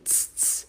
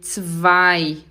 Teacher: O Z tem som de TS, tss, tss, e o W tem som de V, zwei. O EI tem som de I, zwei.